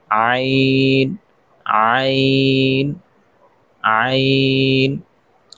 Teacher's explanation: আইনের মাখরাজ জিহ্বা হলকের মধ্যখান হইতে আইন উচ্চারিত হয়। হলকের মধ্যখান হইতে আইন আইন আইন।